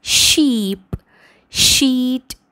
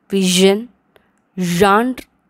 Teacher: sh and z, one is voiceless, unvoiced, the other one is voiced.